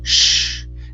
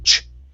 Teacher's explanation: The SH is a flow of air, shh. The CH, we stop the air, ch.